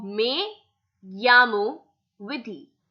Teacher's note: E in Spanish is pronounced as AY and double L is pronounced as Y